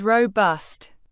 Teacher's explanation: Pronounce it as robust. Say row, like rowing a boat, then bust, like to break something, emphasizing the second syllable.